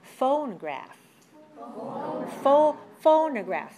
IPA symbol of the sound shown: ə